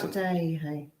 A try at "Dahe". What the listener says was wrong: Well, I'd say with da. You know, that says Dahe to me.